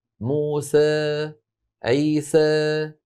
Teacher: المماله اماله بين بين يعني بين الالف والاماله الكبرى هي معنى بين بين بين الالف الصافيه وبين الاماله الكبرى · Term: اماله صغرى